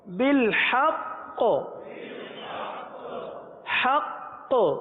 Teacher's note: آگے وقف مستقیم فیہ آگے وقف فیہ آخر میں ہاں کی آواز ہا ساکن کی آواز فیہ شفتین آگے وقف شفتین شفتین بالحق قوف کو پور پڑھیں گے بالحق آگے وقف بالحق وقف میں قلقلہ مشدد ادا ہوگا کیونکہ تشدید وقف میں باقی رہتی ختم نہیں ہوتی